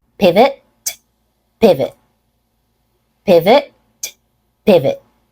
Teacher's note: pivot pivot pivot pivot has stress on the first syllable pivot has more length a clear vowel sound on the first syllable and a reduced second syllable